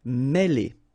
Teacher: Okay, remember, accent circumflex here on the top of E, and it will give you the sound E, really open